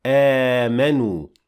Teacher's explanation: Because of the med badal, we are allowed to exchange the second Hamza with an alif and say آمنوا with 2 counts